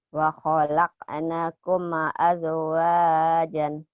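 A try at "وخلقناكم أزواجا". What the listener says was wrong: Naknya panjang. Wa khalaqnakum azwajan.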